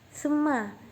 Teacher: sebab ada huruf mim ditasydid. Ketika dibaca huruf mimnya harus didengungkan. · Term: guna